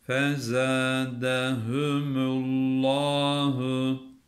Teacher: Allah lafzının lamını kalın okuyoruz.